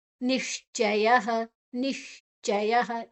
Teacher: ಯ ಆದನಂತರ ವಿಸರ್ಗದ ಉಚ್ಚಾರಣೆ ಹ